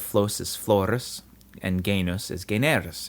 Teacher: in between two vowels, a single s in Latin changes into an r. This process is called rhoticization, after the Greek letter rho, which makes a r sound.